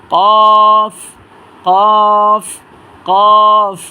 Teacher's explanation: উচ্চারণ হবে জিহ্বার ঘোড়া তার বরাবর উপরে তালুর সাথে লাগাইয়া এবং তিন আলিফ টেনে এবং মোটা আওয়াজে হরফটা উচ্চারণ করবেন